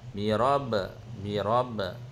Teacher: Birab qalqalah kecil pada ba.